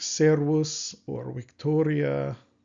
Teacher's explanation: the V in the Roman style pronunciation is pronounced w, as in well. · So I actually mispronounced one of the words earlier because last year I was pronouncing this like a V, but this would be like servus or Victoria. Those words with a V, it's pronounced W.